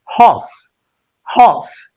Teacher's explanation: The pronunciation is horse. R sound is not there.